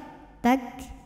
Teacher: Anginnya jangan tertinggal ya. Tak, bunyi anginnya keluar setelah suaranya keluar ya. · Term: hams